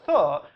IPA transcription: θ